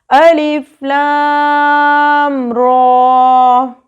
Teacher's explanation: را کے اوپر کھڑی زبر ہے. کھڑی زبر کو 2 زبر کے برابر لمبا کیا جاتا ہے.